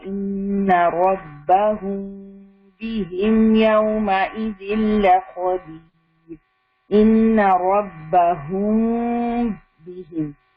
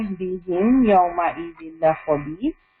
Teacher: اخفاء شفوی ادا کرتے وقت ہم میم پر اپنے ہونٹ بند کرتے ہیں، پھر اس دوران غنہ کرتے ہیں اور پھر انہیں با کے لیے الگ کر دیتے ہیں. ٹھیک ہے، اور یہ ادغام اور اظہار کے بیچ کی پوزیشن ہوتی ہے.